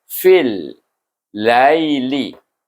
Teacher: bunyi lai itu tak boleh panjang, iaitu bunyi dengan lin, dengan lembut. Dan betul bunyi ya-nya lai, li, bunyi bukan yi, lai, bunyi lai, iaitu sedikit bunyi mahraj ya itu baru betul bunyi lin itu.